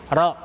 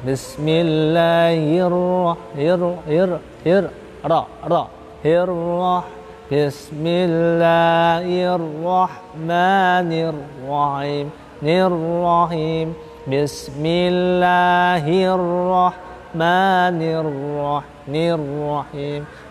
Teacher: Ra mempunyai sifat takrir, satu kali getaran lidah halus, ra. Makanya ketika ada ra mati atau ra bertasdid itu hakikatnya adalah ra-nya double.